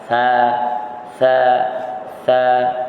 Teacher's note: Istifal iaitu pangkal lidah tidak terangkat masa kita sebut huruf sa Sa. Jadi pangkal lidah duduk di bawah, tidak terangkat.